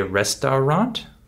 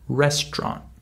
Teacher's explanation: We skip the middle syllable due to the stress in this word.